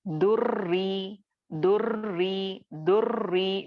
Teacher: जैसा यहाँ पे मैं आपको बताई दुर्री दुर्री दुर्री, मैं 2 बार रॉ को अदा कर रही हूँ। ठीक है, पहला साकिन वाले रॉ को मैं दाल से मिला रही हूँ और फिर उसके बाद रॉ जेर री जो कसरा है इसको मिलाकर मैं पढ़ रही हूँ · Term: रॉ मुशद्दद